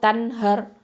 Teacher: இந்த ரா சுகுன் என்னது தஃப்ஹீமாக சொல்லணும்